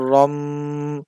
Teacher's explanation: এর পরে একটা মিম সাকিন আছে র মিম দুই জবর রম দুই ঠোঁট মিলে যায় কিন্তু সামান্য পরিমাণ ফাঁকা রাখবে